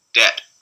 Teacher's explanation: It's pretty strong release on this word final one for the final coronal stop.